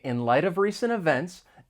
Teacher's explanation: So the final T in light, it comes between two vowel sounds, so you're going to hear me pronounce it as a flap T. It's going to sound like a soft D.